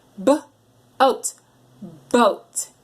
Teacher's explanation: I heard you say mmm mo with an M sound but we want the boat with that popper sound